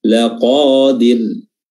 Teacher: huruf ra dibaca tipis tarqiq karena dia sukun didahului oleh huruf yang berharokat kasrah